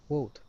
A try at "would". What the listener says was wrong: now you're saying whoa. Instead of whoa, it's would. Open your mouth. Okay, so instead of an oo, keeping the lips tight, open your mouth. Would.